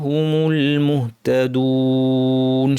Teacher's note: শেষে ওয়াও নুন 2 আলিফ, টেনে থামবো